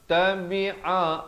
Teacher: ain di pertengahan kerongkong, tukar makhraj ke bawah